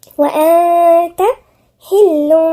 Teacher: التاء دي مش من حروف الاستثناء، يبقى هنغن فيها، هي غنة إخفاء